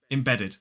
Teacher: three syllables the stress falls on the second syllable so the first syllable is I then we have a stress